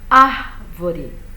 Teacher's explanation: essa palavra tem a sílaba tônica dela, é a antepenúltima. Não é a última, não é a penúltima, é a antepenúltima. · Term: proparoxítona